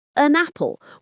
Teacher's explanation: An apple becomes an apple with that N sound flowing right into the vowel. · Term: Linking